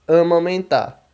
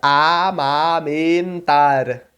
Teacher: só tem a diferença de que ele não nasala a vogal que ele vier antes · Porque o A não pode ter às vezes ter som de A e às vezes ter som de AN. Porque quando ele vem antes de M ou N, a gente nasala o A